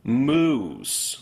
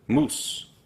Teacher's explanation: some dialects of English will use two vowels here. Moose, where Spanish consistently will use just one pure U.